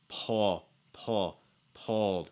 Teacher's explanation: So it's not pulled, it's pulled. Sound, dark L, back of your tongue high, front of your tongue down. Hold that front of your tongue down.